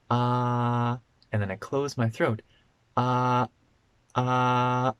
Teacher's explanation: A glottal stop is when your throat closes just a little bit and it prevents the air from coming out. So if I say ah and then I close my throat, ah, ah, then you can hear my voice stopped.